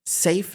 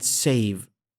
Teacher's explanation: Very short indeed in this position, but the vowels are very different lengths. In safe, the A is quite short, and in save, it is really long. · Fa is stronger and longer, va is weaker and shorter.